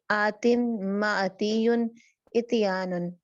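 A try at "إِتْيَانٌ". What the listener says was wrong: ठीक है, ईटी है ये सिस्टर, ईटी, इटी नहीं है, ठीक है। इसको ये आपने गौर से करना है।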